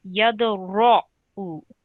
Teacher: this ra here, ra with a fatha or an r sound, is a thick letter. So it needs to be pronounced with a rounded mouth.